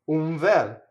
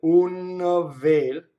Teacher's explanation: The N, when the Italian's not thinking about it, the N will stay on the bottom lip and assimilate into the V or the F